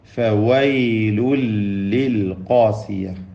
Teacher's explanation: തൻവീനിനെ ലാമിലേക്ക് പൂർണ്ണമായും ലയിപ്പിച്ച് മണിക്കാതെ ഉച്ചരിക്കണം. ഇദ്ഗാം ബിലാ ഗുന്ന.